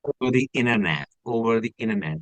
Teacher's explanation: we get T silent when we have an N before T. So N T it's T sound T sound will be silent.